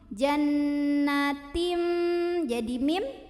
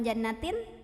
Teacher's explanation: bunyi tanwinnya, bunyi an-nya diganti menjadi bunyi mim sukun, jadi Jannatim jadi mim, bukan jannatin, sambil berdengung. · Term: hukum iqlab